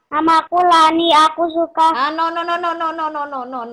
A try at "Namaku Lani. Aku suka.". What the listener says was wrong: Tidak seperti kereta cepat bacanya. Pelan-pelan.